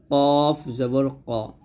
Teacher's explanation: ক আর কাফটা হবে পাতলা কাফ জবর কা এরকম ভাবে অর্থাৎ কফটা হবে জিবার গোড়া তার বরাবর তালের সঙ্গে লাগিয়ে